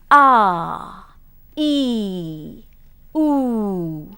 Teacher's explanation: the air just flows out freely and continuously and there is no obstruction at any point